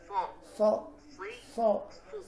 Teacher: kita tempelkan di dinding gigi seri bagian bawah, gigi seri bagian bawah, bagian dinding dalamnya. Kemudian ujung lidah belakang kita angkat ke langit-langit mulut kita sehingga suaranya menjadi tebal.